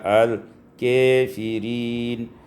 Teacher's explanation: imalatu fathatil kaf, di imalah fathah kaf itu wal alif dan alif sehingga dibaca al-kafirin.